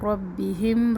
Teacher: را کو پر پڑھنا ہے، ہم ہا کی زیر مجہول نہ ہو